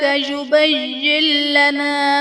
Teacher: یبین لنا میں نون ساکن کے بعد حروف یرملون میں سے لام ہے تو یہاں پر ادغام بلا غنہ کا قاعدہ ہوگا، یعنی نون ساکن میں ہم غنہ نہیں کریں گے